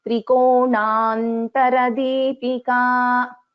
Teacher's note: there is a little bit of dvitvam, that is the stress, that is the dvitvam, the doubling of na here.